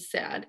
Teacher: And you can hear that the sat is aspirated and the sad is also aspirated, but the duh at the end of sad is voiced, in contrary to sat.